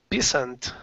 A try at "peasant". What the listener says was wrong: So it's actually pronounced peasant. Peasant. Yeah, it's kind of an exception in pronunciation. It really looks like peasant, but it's pronounced pe, and then the S sounds like a Z. Peasant. Peasant. So that Z really needs to come out.